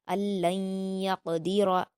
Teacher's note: نون ساکن کے بعد یا ہے تو یہاں پر ادغام یرملون غنہ کے ساتھ ہوگا